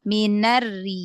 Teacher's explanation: Jangan diangkat pangkal lidah biar ro-nya tipis.